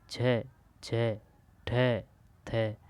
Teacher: महाप्राण यानी कि बोलने में थोड़ा बहुत जोर लगाना पड़ रहा है।